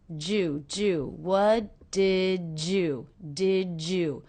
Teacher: So the D and the Y here are combining to make the J sound.